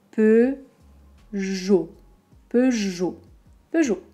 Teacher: Un O très fermé, O. Donc on n'entend pas de T, on n'entend pas de EO